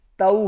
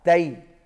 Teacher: تا زبر واو تاؤ، تا زبر واو تاؤ، اور اس کے بعد ہے تا زبر یا تئی۔ واو کے ساتھ آؤ ساؤنڈ ہوگی اور یا کے ساتھ ای ساؤنڈ ہوگی